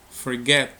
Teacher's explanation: Forget, aquí es dos sílabas. La mayor fuerza de voz es get